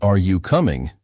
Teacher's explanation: Your voice rises at the end to show it is a question.